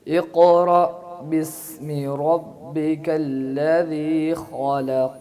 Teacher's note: बिस्मी जो है ना, बिस्मी सीन, इसमें सीटी की आवाज़ सही तरह है।